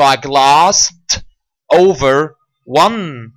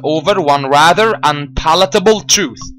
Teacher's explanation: It's glass, glassed, glass, glassed. The last sound is s. So when I add an ed, the ed altogether are pronounced as a t sound.